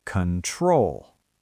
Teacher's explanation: We do not say control with a round O sound at the beginning. The stress is on the second syllable. So the first O becomes awah.